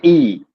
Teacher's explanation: मुंह प्राय बंद या बहुत कम खुलता हो